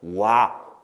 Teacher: 오에서 시작해서 아로 끝나잖아요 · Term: 이중모음